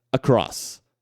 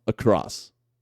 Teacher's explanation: ele é um A, mas é um A curtinho, ele tá por ali. Isso é por ali que importa, que é um som fraco e preguiçoso.